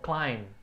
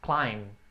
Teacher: Essas palavras em inglês que terminam com MB, geralmente o B não é pronunciado, só termina no M ali, o som, climb. Então tem o B na escrita, mas só fecha no M